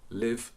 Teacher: in rp traditionally you would have a light l before a vowel so the word live would have a a light l or